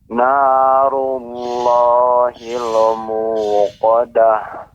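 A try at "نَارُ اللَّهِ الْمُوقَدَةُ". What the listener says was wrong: Ya, hil lam tidak dibaca memantul.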